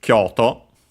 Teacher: it's a Chinese compound, but it's actually accent on the first syllable.